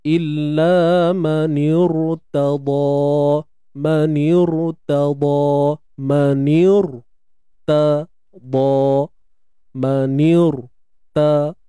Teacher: ra yang mati sebelum dia hamzah wasal, tuan-puan, sebelum dia hamzah wasal, okey, dibaca dengan tebal.